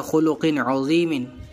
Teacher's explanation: تنوین کے بعد عین آ رہا ہے جو حروف حلقی میں سے ہوتا ہے، لہذا اظہار کا یہاں پر قاعدہ ہے، یعنی ہم تنوین نون ساکن جو ہوگا اس میں گننا نہیں کریں گے۔